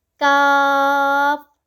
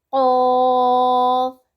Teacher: کاف باریک پڑھیں گے، قوف کو پر پڑھیں گے